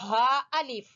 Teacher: نظر آ رہا ہے ہا، تو ہا آپ سمجھتے ہیں کہ ہا جو ہے یہ ہا حلق کے سب سے آخری حصے سے ہے